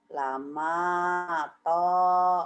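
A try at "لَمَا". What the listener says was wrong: Jadi bibir Ibu kurang ngebuka, kedengarannya kayak sama to, padahal lama to ya Bu ya. Gitu. Kurang membuka. Lama, lama to.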